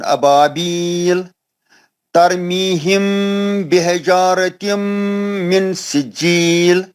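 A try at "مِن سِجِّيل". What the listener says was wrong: मिन सिज्जील नहीं है, इज़ार नहीं है नून साकिन का. नून साकिन का के बाद सीन है. इख्फा करना है ना मेरे भाई.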